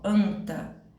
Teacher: o som da letra n não é pronunciado